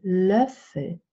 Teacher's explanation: you use the position, the tongue position and the shape of the mouth, the inside of your mouth, for your front vowels, but you use the rounding that you use for back vowels. So the umlauts are somehow related to both back vowels and front vowels.